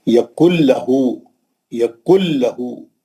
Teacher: کاف کے پیش سے سیدھا لام میں جائیں گے، نون چھوڑ دیں گے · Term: ادغام بلا غنہ